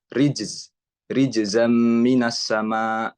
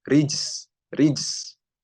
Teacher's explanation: si huruf za ini dia memiliki sifat jahr